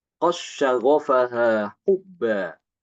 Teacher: Imam Hisham membaca dengan mengidghamkan dal ke shin.